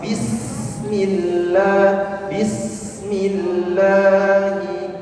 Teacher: Sin mempunyai sifat hamas ya. Mengalir nafas.